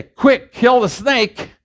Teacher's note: if i say quick kill the snake i'm aspirating all over the place · I'm aspirating all over the place, but it doesn't mean anything differently